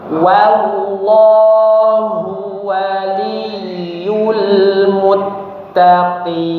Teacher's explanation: Ingat pada laf dzul jalalah yang tebal itu hanya huruf lamnya, huruf wunnya tipis ya.